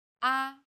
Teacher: Chinese pronunciation is stressed with one of the four different tones the first tone is steady with a high pitch